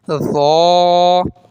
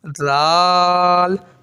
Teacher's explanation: ذو موٹا ہوتا ہے اور ذال باریک ہوتا ہے